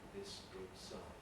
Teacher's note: So if we have the phrase, this good sign, the s of this is voiceless, so there's a delay in starting the voicing for good. And the s of sign is also voiceless, so the voicing switches off quite early.